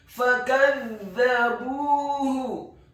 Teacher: Huruf fa-nya dibaca fathah 1 harokat, huruf kaf-nya dibaca tipis, tarqiq fathah 1 harokat. Huruf za-nya dibaca tipis, tarqiq, lidahnya agak keluar sedikit, ditasydidkan, ditekankan, fathah 1 harokat. Kemudian huruf ba-nya dibaca tipis, dhammah 2 harokat karena setelahnya ada huruf waw sukun.